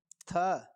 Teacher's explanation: हिंदी की स्पर्श अघोष महाप्राण दंती व्यंजन ध्वनि है